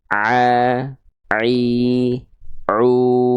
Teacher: Jadi huruf Ain itu dilafalkan dari bagian tengah tenggorokan ya Oke tuh pada bagian katub epiglotis a nah